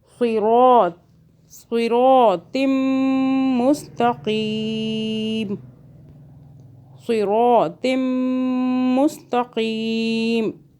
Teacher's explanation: میم مشدد ہے، اس پہ گنہ ہوگا 2 سیکنڈ کا